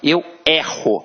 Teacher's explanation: Observa que este E tem um som aberto.